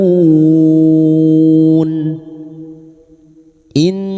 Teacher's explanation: Nun yang bertasdid guna musyaddada kita dengungkan selama 3 harokat